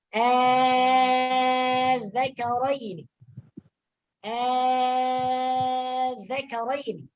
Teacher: Hamzah wasal yang kedua ini diganti dengan alif maddiyah. Ya. Dan panjangnya adalah 6 harokat. · Jadi cara membacanya dibaca dengan 6 harokat. Ya, dengan mad isbah ya, dengan mad yang sempurna yaitu 6 harokat. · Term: ibdal